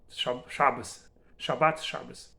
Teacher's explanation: D becomes the, T becomes Th. But in Ashkenazi pronunciation, Tav without Dagesh becomes S.